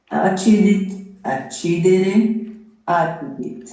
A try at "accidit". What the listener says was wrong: No, è accidit. Il pretérito perfetto è longo, non è breve.